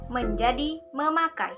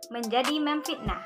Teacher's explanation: Fonem n pada morfem men dan pen berubah menjadi fonem m kalau dasar kata yang mengikutinya berawal dengan fonem p, b, f. Contohnya, yang pertama yaitu morfem men ditambah kata dasar pakai menjadi memakai.